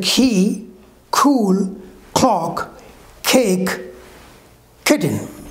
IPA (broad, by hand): kiːz kʊk klɒk keɪk ˈkɪtən